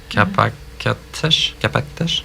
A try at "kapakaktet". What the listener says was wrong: On a pas les- Achète le patate kapakaktet. Kapakaktet, on dit pas kapaktet.